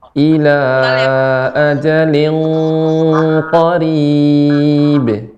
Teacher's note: Tanwin ketemu dengan qaf ini merupakan ikhfa-nya jadi eng. Namun qaf merupakan huruf yang isti'la, maka kita baca tebal.